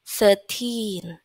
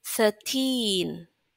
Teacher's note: Jadi, yang ditekan bukan se-nya, tapi tin-nya.